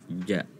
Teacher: diusahakan tidak ada angin yang keluar dari mulut, ja. Jadi agar ditekan, ditarik ke dalam, ja. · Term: jim